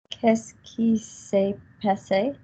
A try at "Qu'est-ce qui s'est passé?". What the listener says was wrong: Gorgeous.